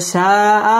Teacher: মধ্যে মুত্তাসিল চার আলিফ টেনে পড়তে হবে